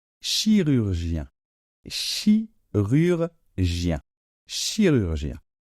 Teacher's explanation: Après le R, attention, le R français se prononce plutôt dans cette partie, d'accord, de la gorge